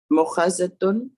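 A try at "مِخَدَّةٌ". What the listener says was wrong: No, mihaddatun. Me has a kasra. Mihaddatun.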